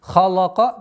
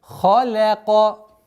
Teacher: Лям у нас здесь мягкая, обратите внимание, между двумя твердыми звуками. Халака, нет, халяка.